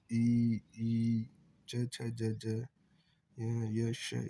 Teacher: ये तालु से बोला जाता है तालव्य कहलाता है